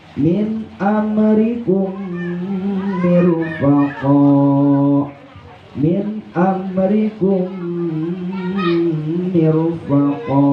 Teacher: Kum diidghamkan, artinya anggap mim yang pertama tidak ada, mim yang keduanya ada siddahnya. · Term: idgham syafawi